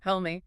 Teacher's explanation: The vowel in me is very short and unstressed.